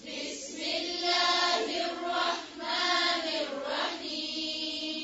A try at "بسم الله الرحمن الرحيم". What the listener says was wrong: نون کی جو زیر اس کو اور باری کریں.